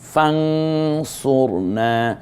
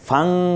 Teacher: ফান না বলে ফাং বলবো তার কারণ নুন সাকিনের পরে সদ এসেছে সদ ত হরফ গুলো আছে ফাংসুরনা এরপরে কি আসবে মানরা মানরা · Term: ইকফা